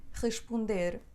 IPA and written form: ʀəʃpõder (responder)